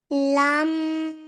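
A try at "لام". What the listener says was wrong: लाम नहीं, लाम खींच कर।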